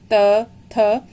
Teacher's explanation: जब इनका उच्चारण करते हैं तो जीवा जाकर दांत को टच करती है। देखिए जब आप बोलेंगे इन वर्णों को त, थ, अंदर वाले जो दांत का अंदर का पोर्शन है उस पे जीवा टच करती है। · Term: दंत्य